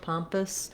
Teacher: So thinking about it like just a little tiny or I sound, pompous, it's a reduced vowel there for sure because it's so much shorter than our pom syllable.